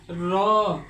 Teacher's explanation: জিহ্বার আগার উল্টা পিঠ তার বরাবর উপরের তালুর সঙ্গে লাগিয়ে র উচ্চারণ করতে হয়